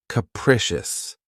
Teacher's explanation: This word has 3 syllables, and the stress is on the second syllable. Keep in mind that the first syllable has that schwa sound.